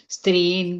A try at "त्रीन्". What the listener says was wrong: No stree. We have already taken the na. So streen is not there. Treen. Treen guna.